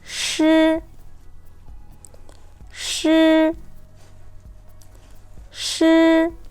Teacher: the first tone is a level even tone